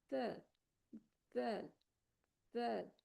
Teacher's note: त तीन नुक्तों वाला ये हमने देखा त के बाद तो वैसे ही जैसे ये दाल के बाद है वो त के बाद है इसकी जो है मखरीज दोनों का एक है और इसकी हमने अभी देखा कि हमारी जुबान जो है बजाय अंदर लगने के ये किनारों से लगती है इनहीं दो दांतों के और हल्का सा जुबान को बाहर निकालेंगे